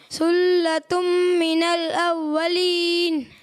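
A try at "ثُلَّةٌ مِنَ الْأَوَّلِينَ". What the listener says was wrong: ماشاءاللہ اچھی کوشش کی آپ نے. لیکن بیٹا جیسا کہ پہلے بھی بتایا سا میں سیٹی کی آواز نہیں آئے گی.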